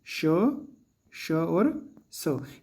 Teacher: उष्म के प्रथम तीन माने श और स ये भी आपके अघोष के अंतर्गत आते हैं